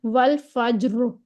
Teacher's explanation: را کی ادائیگی کرتے وقت ہم زبان کے پچھلے حصے کو تھوڑا سا اوپر اٹھا دیں گے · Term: تفخیم